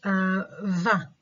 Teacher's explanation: Okay, so the articulation of this sound is exactly the same as the sound fa, except for this the fact that during the articulation of va, the vocal folds are closed, which means they vibrate, and this is why va is a voiced sound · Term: voiced labiodental fricative